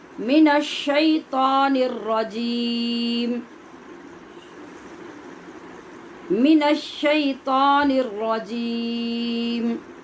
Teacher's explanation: را کو پر بھی کرنا ہے، ہونٹ گول یہاں بھی نہیں ہونے دینے